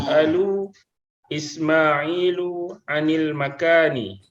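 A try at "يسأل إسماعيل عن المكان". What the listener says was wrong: Naam. Yas'alu Ismailu 'anil makan. Ahsant.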